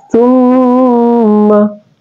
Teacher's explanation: Ma adalah huruf asyafatain keluar di dua bibir kita